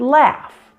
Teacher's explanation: So notice with the F, again, you have no vibration and no sound coming from your vocal cords. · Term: F sound